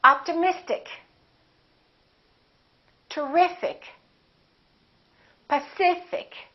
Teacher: the syllable before the IC gets stressed